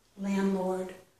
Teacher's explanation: This is landlord, but I'm not pronouncing that D. I know when I say it, landlord, but it probably should be, but I'm not.